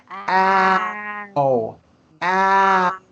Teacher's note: That ah sound is what begins the ow sound. · It starts with ah and it moves forward.